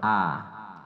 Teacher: Tidak boleh terpleset a. Jadi a itu di bagian dalam tenggorokan. A. Dekat dada. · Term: huruf tenggorokan